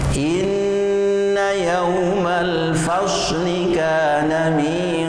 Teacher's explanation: Pemirsa yang berbahagia, ini hati-hati pada pengucapan inna yaumal fasli. Maka huruf shad ini adalah siul